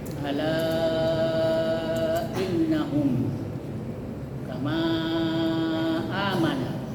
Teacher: lebih baik dipanjangkan seperti panjangnya mad wajib muttasil yaitu 2 seteng alif atau lima harakat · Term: mad jaiz munfasil